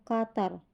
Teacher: Bunyi ini terjadi karena pangkal lidah bersentuhan dengan anak tekak. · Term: bunyi uvular